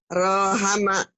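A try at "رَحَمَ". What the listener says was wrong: Mana yang panjangnya? Ini, yang ini, yang ini. Emang ada yang panjang? Nggak ada. Jangan diadain.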